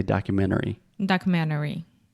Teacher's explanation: If I'm speaking fast, I will almost remove the T. It's more of a stop T, and I do not say documentary.